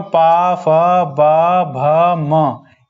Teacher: ये सभी ओठ से बोले जा रहे हैं, तो ये हो गए ओष्ठ।